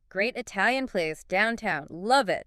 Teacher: the likely emphasis would fall on great Italian place, maybe downtown, and think you'll love it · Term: word emphasis or stress